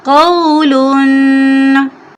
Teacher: इसको नरमी से पढ़ेंगे और 1 सेकंड लंबा करेंगे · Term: वाओलीन